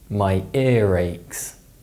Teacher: this is known as the linking R and it's a way of linking words together in Connected speech